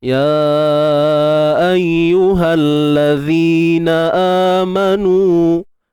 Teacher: Ayyuhalladzi, baik, isim mausul alif lam syamsiyah. Zi, keluarkan sedikit hujung lidah kita dan baca 2 harakat mad asli